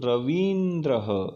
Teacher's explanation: ई और ई अगर साथ में आता है तो दीर्घ लॉन्ग ई बन जाता है